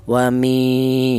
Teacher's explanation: Wa mi yaitu ada sama tadi matobi'i, yaitu ada ya yang mati didahului huruf yang berharokat kasroh, dibaca matobi'i ya. Panjangnya matobi'i itu 1 alif atau 2 harokat atau 2 ketukan ya.